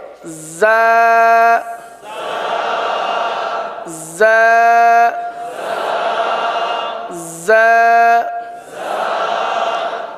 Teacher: زبان زیادہ تر نیچے کی جانب رہتی ہے اور نیچے کی جانب رہ کر زا سیٹی کی آواز کی طرح اس حرف کی آواز نکلتی ہے. پڑھیں زا زا زا.